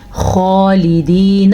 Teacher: خا کو موٹا بھی پڑھنا ہے کیونکہ یہ ان 7 حروف میں شامل ہے جو ہمیشہ پر یعنی کہ موٹے پڑھے جاتے ہیں